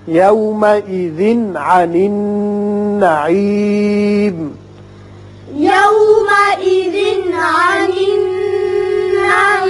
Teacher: یومئذ تنوین کے بعد عین ہے، یہ اظہار حلقی ہوگا